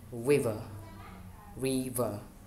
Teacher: Re is in stress and then ver is in unstressed